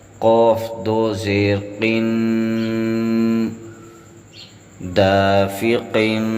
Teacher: اس لفظ میں ہم نے قاف کے نیچے دو تنوین کی وجہ سے غنہ بھی کیا ہے اور قاف حروف اخفاء میں سے ہے، اس کو موٹا بھی کیا ہے، اور ساکن ہونے کی صورت میں ہم نے قاف پر قلقلہ بھی کیا ہے۔